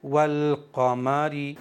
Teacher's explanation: यहाँ पर अलिफ को नहीं पढ़ेंगे, लाम पढ़ा जाएगा सिर्फ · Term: इजहार कमरी